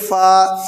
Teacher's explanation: इसको नर्म यानी ऊपर के दांतों का किनारा नीचे तर हिस्से होंठ में लगाएंगे, ऐसे कहेंगे फा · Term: अरबी वाला